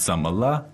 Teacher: it kind of goes High it goes up in the end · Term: question kind of intonation